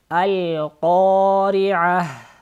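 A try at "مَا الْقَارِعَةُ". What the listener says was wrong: Мал-ко. Когда мы читаем «ма», выявляйте «а». «Маль» так через нос не читайте. «Ма», Также «мале» лям не отпускайте и соединяйте. «Маль-ко», «мале» так не отпускайте лям. и «ко» твердо. «А», выявляйте букву «айн», «а» и «а». А, вот так.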